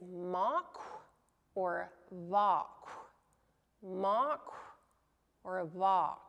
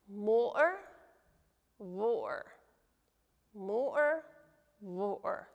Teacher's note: So basically, M and the V sound are treated as if they're the same sound. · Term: free variation